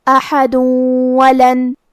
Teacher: دال پہ تنوین پیش ہے، پھر حرف الواو ہے، تو یہاں حکم ہے ادغام، ہمیں یہ حکم کو غنہ اور تشدید کے ساتھ ادا کرنا ہے